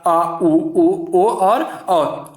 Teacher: जिन स्वरों के उच्चारण में जीभ के पीछे का हिस्सा उठता है वे क्या कहलाते हैं, पश्च स्वर कहलाते हैं